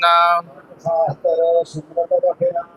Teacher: ਖਟ ਪੋਲਾ ਬੋਲਣਾ ਖੱਟ ਨਹੀਂ ਬੋਲਣਾ